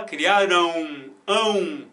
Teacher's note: É claro que quando aparece, né, um AM, você não visualiza um ditongo, mas acredite se quiser, existe um ditongo aqui. Porque você não fala criaram, você fala criarão, ão. É como se fosse um uzinho, um a o tio aqui, né?